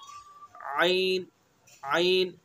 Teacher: आइन, हा का जो मखरज है वस्त हल्क यानी हल्क का दरमियानी हिस्सा